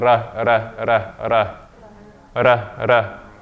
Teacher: Your tongue is touching the front of the roof of your mouth.